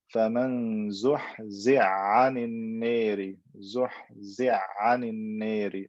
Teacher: I join, I merge the ha into the ayn. They come from the same makhraj, the throat